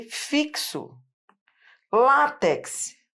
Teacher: E o X, que é onde eu quero chegar, ele pode ter som de KS.